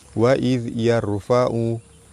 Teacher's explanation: Ra mati sebelum dia huruf baris atas, ra dibaca tebal.